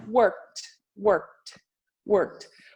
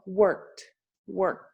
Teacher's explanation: Então, você pode ter no exemplo de work, você pode ter o som de K e T junto, sem colocar um vogal.